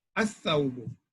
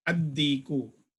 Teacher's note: The lam will become a silent letter in the Huruful Shamsiyya.